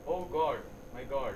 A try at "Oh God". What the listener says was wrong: It's not oh God. It's like, you are whispering. It's like cheating at an examination at IIT. Do it loud. You are crying to God.